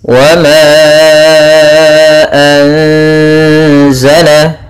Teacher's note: Pada lafal ma ada mad jaiz munfasil, yaitu ditandai dengan adanya hamzah yang datang setelah huruf mad dan hamzahnya di lain kata, maka panjangnya 4 harakat